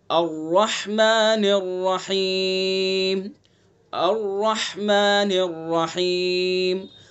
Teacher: را کو پر پڑھیں گے چونکہ را متحرک ہے، را کے اوپر زبر ہے